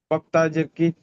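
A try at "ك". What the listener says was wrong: হ্যাঁ, ক, কা, কফ নয়, এটা কাফ, কাফ তাজের কিট, ইজরা করেন।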